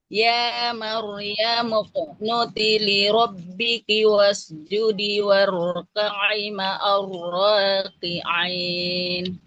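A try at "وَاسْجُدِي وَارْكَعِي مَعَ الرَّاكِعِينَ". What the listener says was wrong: Sebentar Ibu. Wasjudi waraka'i. Panjang. Jangan terlalu cepat.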